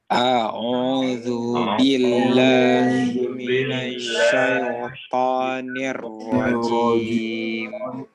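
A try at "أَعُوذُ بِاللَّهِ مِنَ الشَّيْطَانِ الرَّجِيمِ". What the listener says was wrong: Di sini ada koreksi ya sedikit mengenai syaito ya. Syaito, jangan syai, jangan syai. Kalau orang Arab bilang syaiton. Ya, tapi syaito, ya syaito, dan dia tanpa ditekan. Syaito, tapi syaito halus masuknya.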